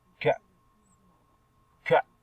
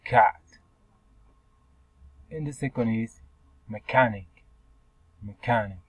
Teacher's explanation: Your manner of articulation is plausible, and your place is velar, and is a voiceless consonant sounds